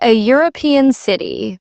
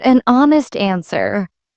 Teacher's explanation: We say a European city because European starts with a Y sound, but an honest answer because honest begins with a silent H and a vowel sound